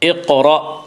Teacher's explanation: جب ان حروف کے اوپر جزم آئے تو ان کو پڑھتے وقت ان کے مخرج ٹکر کھا کر الگ ہو جاتے ہیں۔ اقرأ، را کو پر پڑھیں گے